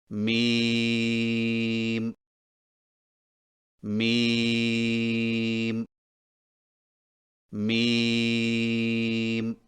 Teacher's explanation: میم کی ادائیگی میں ہونٹوں کے خشک حصے کو قدر نرمی سے ملا کر باریک آواز میں پڑھیں، یعنی میم میم میم۔